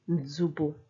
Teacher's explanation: It makes it seem like the N is silent, but it's there right at the start, but the preceding consonant is stronger.